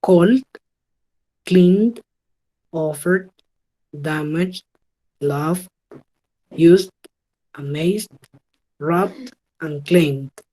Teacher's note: Bueno, los que terminan en esta lista de acá, L, N, R, G, V, S, Z, B y M, van a sonar con una D. Entonces la E no se pronuncia. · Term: el sonido D